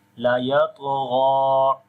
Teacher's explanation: when we stop, we do not make this mad then. Only we say la yatgha with 1 second longing